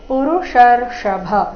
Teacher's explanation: ಎರಡು ಮೂರ್ಧನ್ಯ ಷ ಬಂದಿದೆ ಪುರುಷರ್ಷಭ ಈ ಶಬ್ದದಲ್ಲಿ ಕೊನೆಗೆ ಭ ಮಹಾಪ್ರಾಣ ರಸ್ವ